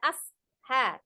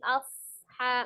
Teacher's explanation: Ashabil, ada huruf shad sukun, jangan lupa disofirkan, tidak di ase, dipantulkan, atau tidak diputuskan di jeda asha, tidak, tapi asha mengalir karena sifatnya adalah al-hams dan ada as-sofir desisnya. Ha dibaca 2 harakat, ada alif kecil di sana, kemudian bil ya, ada ba kasroh bertemu dengan huruf alif lam ya, tapi alif lamnya komari ya, maka langsung disukunkan ke huruf lam.